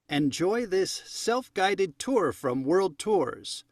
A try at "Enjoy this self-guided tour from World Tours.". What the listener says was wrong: Choppy. He stopped a little at the beginning.